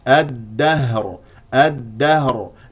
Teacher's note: الهاء ساكنه مهموسه من اقصى الحلق باهتزاز الاوتار الصوتيه لا تقول الده الده تخرج · هنا لدينا اللام الشمسيه والدال لانه جاء بعد اللام حرف مشدد نبدا بهمزه قطع مفتوحه والدال شديده مجهور